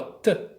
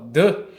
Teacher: O D vibra muito mais as cordas vocais.